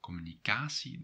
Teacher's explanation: the stress is on the third syllable